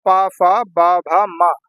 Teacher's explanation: ये ओष्ठ से बोले जाते हैं। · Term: पा वर्ग